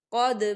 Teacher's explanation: دیکھیں یہاں دال کے اوپر ساکن ہے اور دال پر قلقلہ ہوگا